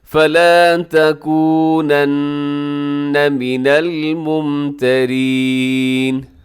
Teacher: مر ربی کا، الحق مر ربی کا، آگے فلا تکونن، یہاں نون کے اوپر تشدید ہے، اب یہاں پر غنہ کیجیے گا، آواز کو ناک میں لے کے جائیے گا